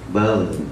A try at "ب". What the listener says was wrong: Lagi, bag. Enggak, bag. Enggak mandek dia, mengalir. Bag.